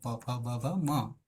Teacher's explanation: અને પ વર્ગ કહીશું તો પ ફ બ ભ મ ઓઠમાંથી પ્રગટ થાય છે